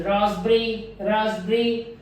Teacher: Then we have seen that p before ba, raspberry, p before b is silenced.